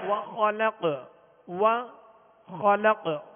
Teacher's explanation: خا کو پر پڑھیں گے اس لیے کہ حروف مستعلیہ میں سے